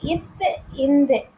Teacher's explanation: இத்து இந்துக்கு நாவின் நுனி மேல்வாய் பல்லின் அடி